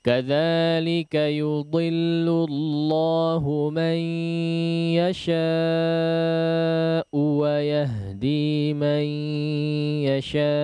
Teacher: di akhir daripada waqaf wa yahdi man yasha, dijelaskan hamzahnya ya